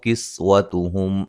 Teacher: سین کو سیٹی کے ساتھ